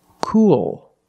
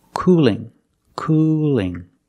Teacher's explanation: Cool has a dark L at the end, but cooling has a light L.